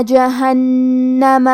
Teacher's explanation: کلمت جہنمہ میں نون پہ تشدید ہے تو ہمیں 2 حرف کے برابر نون کو پڑھنا ہے